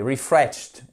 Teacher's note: j'exagère sur le ti à la fin mais c'est bien un ti